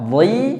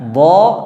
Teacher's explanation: Monyong hanya saat dhammah saja. Adapun ketika dia kasrah, dhi dan fathah, dha, maka tidak dimonyongkan mulutnya